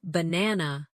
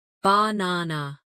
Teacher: in the word banana, the stress is on the second syllable